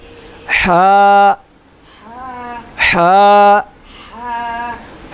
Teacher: حا کا جو لفظ جو مخرج ہے وہ اور ہے، حلق کے درمیان والے حصے سے ادا ہوتا ہے. جیسے ایسے ہوا نہیں نکالتے، اس طرح جیسے ہوا نکالتے ہیں ایسے.